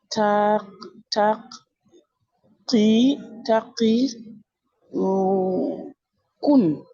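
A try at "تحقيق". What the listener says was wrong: Ouais, mais juste, t'as oublié une lettre ici. T'as dit taqi-kun. Ici, si t'as pas. Ici, en fait, ça, c'est une soukoun, hein. Donc, il n'y a pas de point. Donc, c'est ha. Tahqiqun. Tahqiqun. Dis-moi ha. Ha. Ha.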